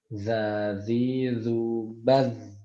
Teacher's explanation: Huruf zal itu termasuk yang memiliki sifat rokhawah. Rokhawah itu berarti mengalirnya aliran udara.